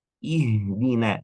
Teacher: Ihdina, tetap ada getaran dari makhrajnya karena nafas yang keluar lebih banyak walaupun dua pita suara terbuka tetap ada getaran sedikit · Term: huruf ha